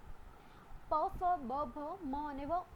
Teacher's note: પ, ફ, બ, ભ, મ અને વ ઓષ્ઠવ્ય છે, હોઠ ભેગા થાય છે અને આ વ્યંજન બોલાય છે